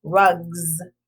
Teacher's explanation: circle the suffix s and in this word rugs sounds like a z